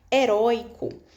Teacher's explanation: Nesse primeiro o tinha um acento agudo, né? Porque o oi é um dos ditongos abertos.